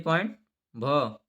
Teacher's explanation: हिंदी की स्पर्श सघोष महाप्राण और ओष्ठ व्यंजन ध्वनि है